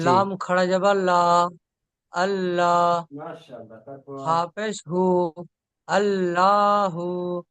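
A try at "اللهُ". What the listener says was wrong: আল্লাহ পড়েছেন, মাশাল্লাহ।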